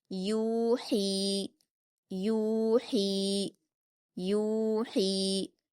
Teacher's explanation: یا مدہ۔ ہا پر یا مدہ ہے، اس کو بھی ہم 2 حرکات کھینچ کر حلق سے ادا کریں گے، باریک پڑھیں گے۔ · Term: واو مدہ